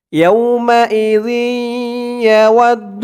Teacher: এখানে ঈদগামে বাগুন্নাহ গুন্না হবে। তানবিনের পরে ঈদগামে বাগুন্নার 4 হরফের 1 হরফ ইয়া আসছে।